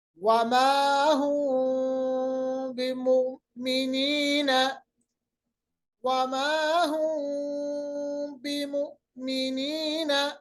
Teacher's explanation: پوری طرح سے میم کی آواز کو نہیں نکالنا, کیونکہ ہم نے میم کی آواز کو چھپا دینا ہے